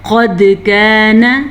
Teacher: قد کان قد قاف زبر دال قد موٹا قاف دال کلکلے کے ساتھ